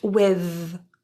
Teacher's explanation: Now, as a side note, there are many slight variations depending on your environment. In certain regions, you may hear a voiced th